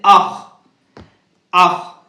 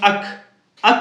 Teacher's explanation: حلق یعنی منہ کے جانب گلے کے آخری والے حصے سے ادا ہوگا. جیسے اخ، اخ یاد رکھے، اس میں بھی اس کے مخرج کو ادا کرنے میں بھی بہت دقت ہوتی ہے.